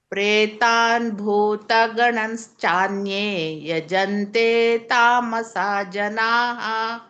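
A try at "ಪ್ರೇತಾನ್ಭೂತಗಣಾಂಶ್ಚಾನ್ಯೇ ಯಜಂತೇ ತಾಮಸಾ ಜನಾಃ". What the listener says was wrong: ಸ್ವಲ್ಪ ಅಲ್ಲಿ ದೀರ್ಘ ಕೊಡಬೇಕು ನೀವು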